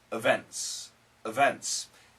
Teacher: of course n kills the T